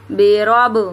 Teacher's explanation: اب با حرف کلکلا ہے اس لیے آواز پلٹی ہے اس کی